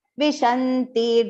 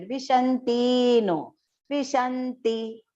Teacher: Vishanti, do not make that ti long there.